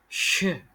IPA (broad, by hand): ʃ